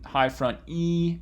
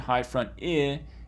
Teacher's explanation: this distinction here between high front E and high front I is a distinction between a tense E and a lax I.